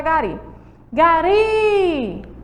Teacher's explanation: a sílaba tônica é a última ele é uma oxítona